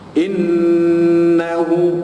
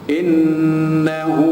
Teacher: nun yang bersabdu, wajibul gunnah, wajib dibaca dengan dengung